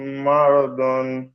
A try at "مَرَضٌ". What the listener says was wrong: দন নয়, মারাদুন। জুন নয়, না জুন হবে আর না দুন হবে। এই দুটির মাঝখান দিয়ে জিভের কিনারা, আমরা পড়েছি দদের মাখরাজ, জিভের কিনারা, জিভের আগা নয়, জিভের কিনারা, দুই সাইড, আর মাড়ির দাঁতের সাথে লাগিয়ে উচ্চারিত হয় দদ। দদ।